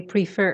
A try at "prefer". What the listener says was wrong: put the stress on the second syllable you always say prefer that's wrong